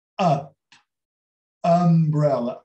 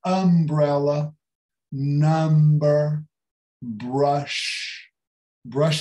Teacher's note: É um A fechado que quer ser U.